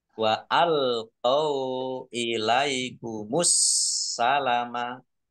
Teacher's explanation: As-salama ini ada alif lam syamsiyah karena tidak dibaca langsung masuk ke huruf berikutnya yaitu sin. Ditandai sinnya ada tasdidnya.